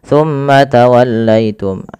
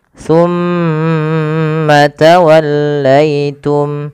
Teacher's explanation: Pada lafal summa ditahan dulu. Lafal mimnya ditahan. Jangan langsung dilepaskan.